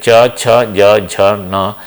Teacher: they are produced by providing a constriction at a palatal position